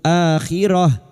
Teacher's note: Ta marbutah yang dibaca waqaf kita baca sukun.